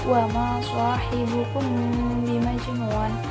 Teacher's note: ikhfa syafawi karena ada mim mati bertemu dengan ba. Dibacanya dengan samar-samar.